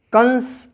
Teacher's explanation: स का उच्चारण स्थान दंत है, और दंत से उच्चारित होने वाला पंचम वर्ण ना है, तो इसीलिए हम इसको कंस का उच्चारण कर, कंस ना का उच्चारण आ रहा है, ना की ध्वनि आ रही है।